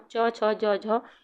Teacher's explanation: इनका उच्चारण स्थान क्या है तालव्य तालव्य है